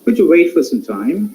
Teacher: All these are rising tone, low rising tone, in order to make it to some soft asking question, or soft in terms of requesting.